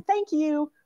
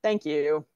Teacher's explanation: I'm reading with sort of exclamation mark like polite cheerful intonation